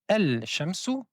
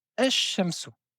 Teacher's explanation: on ne va pas prononcer le lam, on va prononcer deux fois la lettre shin. On ne dit pas al-shamsu, mais on dit ash-shamsu qui signifie le soleil. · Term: lettres solaires